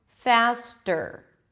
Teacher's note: faster, we move from the T sound to the R, tur, as in turkey. Faster, not faster. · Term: true T